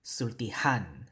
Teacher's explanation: But sulti doesn't have that glottal stop, sulti. So we have to put a stress on the last syllable, han. So we help that by adding an H, right?